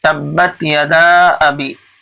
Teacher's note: حروف مدہ کے بعد اگر دوسرے کلمے میں حمزہ آتا ہے تو مد منفصل ہوتا ہے. تو یہاں مد منفصل ہو رہا ہے، اس لیے آپ کھینچ کر کے پڑھیں گے